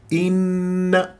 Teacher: كسره الهمزه بدون اختلاس ولا مطن